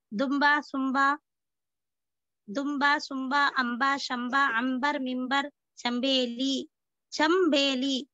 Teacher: अब देखिए वो अल्फाज जिनमें नूने गुन्ना से मीम की आवाज निकलती है, मतलब वो होंगे तो नूने गुन्ना ही लिखा भी जाएगा उसको नूने गुन्ना मगर पढ़ने में उसकी आवाज मीम की तरह आती है